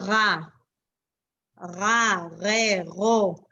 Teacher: It's glottal. It's all the way back there. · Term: reish